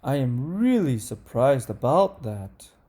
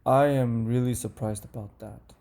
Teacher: in number one the intonation goes up and in number two the intonation goes down